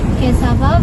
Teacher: the stress is on the first syllable, cas, and the suffix va.